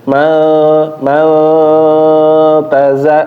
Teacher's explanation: ujung lidah ke pangkal gigi seri atas ya atau tempat tumbuhnya gigi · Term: huruf ta